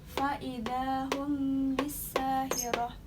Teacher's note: Mim mati bertemu dengan ba, dibaca dengan menyamarkan mim mati karena mendengung atau gunah. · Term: ihfa syafawi